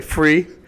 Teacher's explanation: doing the th sound with an F sound instead